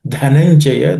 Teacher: the dha in that word Dhananjaya is aspirated.